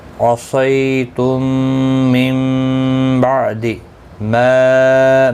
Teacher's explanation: مد منفصل ہے، 3 الف کی مقدار کے برابر کھینچ کر پڑھیں گے